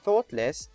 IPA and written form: θɔːtlɪs (thoughtless)